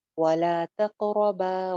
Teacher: شئتما ولا تقربا. تقو قاف پہ کلکلا ہو جائے گا، آواز باؤنس کر جائے گی. ولا تقربا، را موٹی، با باریک، با کے ساتھ الف بھی ہے ایک الف لمبا.